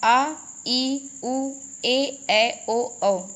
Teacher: दीर्घ स्वर, इनके उच्चारण में ह्रस्व स्वरों से 2 गुना समय लगता है। 2 गुना मतलब डबल समय लगता है।